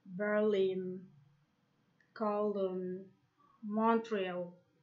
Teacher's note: some place names which have main stress on the last syllable